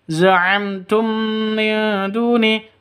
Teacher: Mim mati bertemu dengan ta. Jelas, terang, karena izhar safawi.